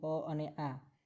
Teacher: અ અને આ છે એ એકબીજાના સજાતીય સ્વર કહેવાય, કારણ કે એક કંઠ્યમાંથી જ બોલાય છે.